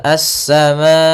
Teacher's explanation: Kemudian pada lafal as-samaa'u, di sini asa ada alif lam, maaf, di sini salah menulis, yaitu bukan qamariyah, tapi dia alif lam syamsiyah, yaitu adanya alif lam yang ditulis dan dia tidak dibaca, langsung ke sinnya